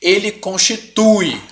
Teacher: o som do U engoliu o som do I. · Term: ditongo